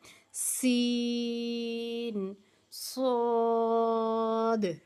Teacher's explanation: एक तो सीटी की आवाज और फिर ऊपर के दांतों के अंदरूनी किनारों से जुबान की नोक को टच करके